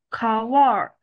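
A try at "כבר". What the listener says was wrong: 啊 ， 就 是 注 意 哈 ， 这 个 ▁var ▁哈 ， 它 不 是 ▁kvar， 这 个 ▁k ▁后 面 呢 ， 它 是 没 有 元 音 的 ， 但 是 你 读 的 时 候 可 以 稍 微 带 一 个 ▁a ▁的 音 也 是 可 以 的 ，kvar，a ▁可 以 读 成 ▁a ▁kvar， 但 是 它 的 重 音 在 后 面 ▁kvar， 然 后 你 会 越 来 越 就 是 读 的 熟 练 了 以 后 呢 ， 就 读 成 ▁var ▁啊 ， 它 这 个 ▁k ▁的 后 面 是 没 有 音 的 ， 啊 ， 你 慢 慢 练 ， 但 是 不 要 读 成 ▁kvar， 它 不 是 ▁kvar。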